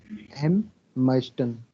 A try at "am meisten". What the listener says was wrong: Am meisten, not M.